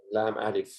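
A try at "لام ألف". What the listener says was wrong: Very good, sister.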